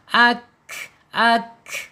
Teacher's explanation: sifat hamasnya akan muncul ya ketika dia harokatnya sukun